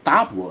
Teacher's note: Quando a gente fala tábua, a gente usa um T fortão, um T dental, né? Interdental.